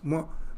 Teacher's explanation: it ends by closing of the lips m so nowhere the tongue is coming into picture so that's the most undistorted sound o undistort is the moment Thatara is limited is obstructed by the tongue by various portion by touching various portions of the mouth.